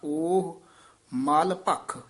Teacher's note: ਭਖ ਵਿਚ ਡੈਸ ਦੇ ਕੇ ਪਾਠ ਉਚਾਰਨ ਕਰਨਾ ਓਹ ਮਲ ਭਖ ਮਲ ਪੋਲਾ ਬੋਲਣਾ ਭੱਖ ਕਸ ਕੇ ਬੋਲਣਾ